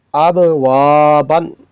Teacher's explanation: حروف قلقلہ میں سے با آیا ہے اور حروف مدہ میں سے الف آیا ہے، تو اس کو بھی تھوڑا سا کھینچیں گے